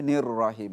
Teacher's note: শেষের রটা একটু দেরি হবে আরেকটু মোটা হবে